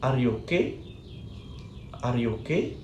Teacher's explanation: the rising pitch invite The Listener to provide an answer and making it clear that the statement is a question